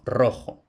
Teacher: la R fuerte, es decir, vibrante múltiple, a principio de palabra